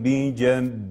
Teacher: الراء هنا مسبوقة بألف ممال، إذن فالراء وقفا ستقرأ بالترقيق لأجل هذا الألف ممال